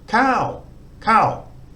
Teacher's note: the the second tone mark um and low class central consonant second tone mark gives it a a higher tone so we've got to try and sort of move average register up but keep it short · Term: high tone